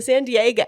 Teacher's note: that's a fronted back vowel